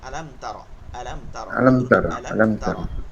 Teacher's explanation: আলাম এটার দিক খেয়াল করতে হবে আলাম যেন গুন্না না হয়ে যায়